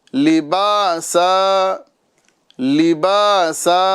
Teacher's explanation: यहां भी आप देखें तनवीन है दो ज़बर वाली। इसे हम लिबासन नहीं बल्कि लिबासा करके यहां पर हम वफ करेंगे।